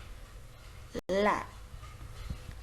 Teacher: It is a voiced alveolar, so we could see the vibration in the vocal cord. The tip of the tongue just rises towards the teeth ridge and it touches the alveolum and the air just releases on the sides of the tongue. It is a lateral sound.